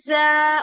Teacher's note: ज को सिटी वाली सीन आवाज लेके आनी है, ज। और बारीक करना है।